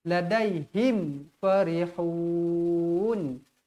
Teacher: ladahim ladahim farihun mim yang bertanda mati bertemu dengan huruf Fa hukumnya izhar syafawi izhar dibaca jelas dan terang